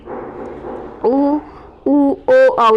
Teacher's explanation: देखो बच्चों, ओष्टाकृति जैसे वर्ताकार ऐसे गोल होता है वर्त, और अवर्ताकार जिसमें होठ क्या है फैल जाते हैं, और वर्ताकार में होठ ऐसे गोल हो जाते हैं, और अवर्ताकार में होठ ऐसे फैले फैले रहते हैं, ठीक है। तो वे स्वर जिनके उच्चारण में होठ वर्त के समान गोल हो जाते हैं उसे वर्ताकार कहते हैं। जैसे ये 4 होते हैं भाई, जिसमें वर्त के समान गोल होते हैं, जैसे ऊ, ऊ, ओ, औ।